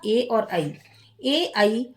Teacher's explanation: इनका उच्चारण किससे किससे होता है कंठ से और तालु से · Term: कंठ तालव्यौ